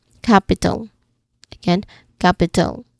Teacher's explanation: The first syllable cap is the stress part.